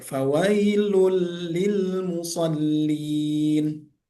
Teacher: Walaupun tanwin dia lun bertemu dengan huruf la bertasydid maka dimasukkan hurufnya menjadi idgham bila ghunah. Idgham huruf yang masuk tanpa dengung dan dibaca pendek. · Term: idgham bila gunnah